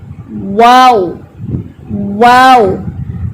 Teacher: وہ جو ہول ہوتا ہے نا, اس کا مطلب یہ ہے کہ یہ آپس میں ملے ہوئے نہیں ہیں, اس لیے بولتے ہیں نا تمام ملنے سے. ہونٹ گول تو ہے لیکن آپس میں ملے ہوئے نہیں ہیں